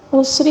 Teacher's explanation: سین کی سیٹی اور را کو باریک پڑھنا ہوگا